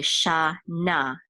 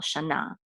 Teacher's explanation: the accent is on the last syllable